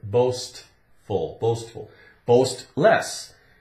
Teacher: it's got the St where you can hear the T in it so it's St boastful boastful boast less they do not boast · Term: T sound